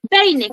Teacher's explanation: El decreciente va a ir de más a menos, es decir, vocal abierta más vocal cerrada. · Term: diptongo